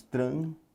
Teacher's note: Transitório, sílaba tônica, está na penúltima casa também.